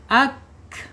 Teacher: Napasnya ketika kafnya sukun, ya. Ketika kaf sukun ini akan mengalir karena dia mempunyai karakter alhams